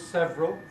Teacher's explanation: several is now normally said as two syllables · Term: compression